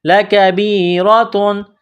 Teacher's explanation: با کو یا کے ساتھ ملانا ہے، را کو موٹا کرنا ہے، را کے اوپر زبر ہے